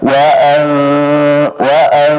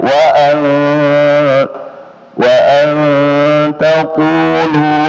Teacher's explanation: nun sukun ketemu ta, ikhfa, ya, ikhfa, dan ikhfa itu ya ada dengungannya 2 harakat